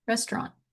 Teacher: restaurant or without the t on the end restaurant.